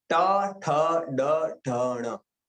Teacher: आप देखो जीभ ऊपर जा रही है आपके बोलने के टाइम पर। ट ठ ड ढ ण, ये कंफर्ट नहीं होता है बोलने के लिए, क्योंकि वो जीभ ऊपर जा रही है। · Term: मूर्धन्य